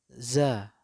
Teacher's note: Huruf zai tempatnya adalah ujung lidah menyentuh pangkal gigi seri bagian bawah. Seperti huruf sin.